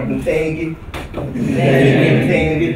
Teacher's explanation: The N can be syllabic. Ns can be vowels.